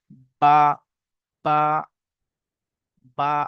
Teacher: 15 নম্বর মাখরাজ, দুই ঠোঁটের শুকনো অংশ মিলিত হয়ে উচ্চারিত হয় বা। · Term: বায়ের মাখরাজ